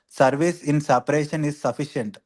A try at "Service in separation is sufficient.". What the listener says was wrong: you're reading so fast. Are you reading so fast? Little slow. sometimes going very fast, sometimes slow. Keep up your pace.